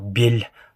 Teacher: можно сказать, что л превращается в ль ля. То есть там автоматически прикрепляется мягкая мягкий знак, хотя она не будет писаться, но она будет звучать.